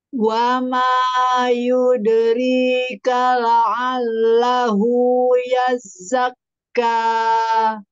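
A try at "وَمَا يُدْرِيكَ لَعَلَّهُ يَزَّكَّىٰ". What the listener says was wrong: Kayaknya jangan kepanjangan, dua harokat saja.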